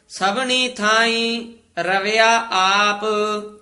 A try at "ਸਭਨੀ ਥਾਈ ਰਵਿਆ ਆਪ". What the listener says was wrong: ਈ ਤੇ ਬਿੰਦੀ ਨਹੀਂ ਲਾਉਣੀ